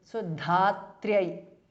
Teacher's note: it is tr not tra, so it is only half t and r